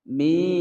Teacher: panjang dua ketukan mad tabi'i ya sukun sebelumnya kasroh